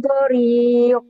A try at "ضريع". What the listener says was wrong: ضريع gitu. ضريع kurang neken. Kurang neken. ضريع dah jangan kekak ya.